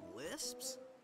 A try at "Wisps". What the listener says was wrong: No, Wisps, with a W.